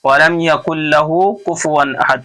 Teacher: وَلَمْ يَكُنْ لَهُ كُفُوًا أَحَدٌ، تنوین کے بعد حروف حلقی کے 4 حرفوں میں سے حمزہ ہے، اس لیے یہاں اظہار ہو رہا ہے، اور احد میں قلقلہ ہو رہا ہے، وقف کی وجہ سے یہاں ساکن پڑھ رہے ہیں